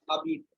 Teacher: The Z is not pronounced here and the H obviously not pronounced. Okay. We pronounce it as abite.